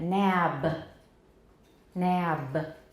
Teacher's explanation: If it's released, this will be nap. And if we release a voiced stop, then we're going to get a little schwa